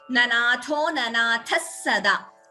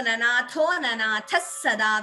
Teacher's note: instead of Visarga, we get an extra S, that is Visarga Sakara Sandhi.